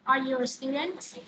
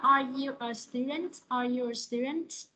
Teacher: Thứ nhất là rising intonation là lên giọng ha. Mình sẽ lên giọng cuối câu